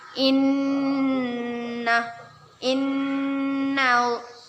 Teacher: nun bertasydid gunnah kita dengungkan dan kita tahan dua harokat